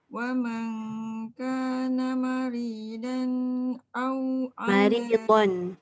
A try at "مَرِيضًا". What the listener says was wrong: Maridon tebal. Jangan maridan. Dan nipis. Maridon. Bon.